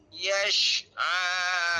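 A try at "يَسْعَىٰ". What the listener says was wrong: Yes sahaja ya, bukan yes. Yes tu huruf shin. YAS sahaja.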